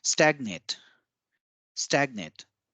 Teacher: in stagnate, we give more stress on the first A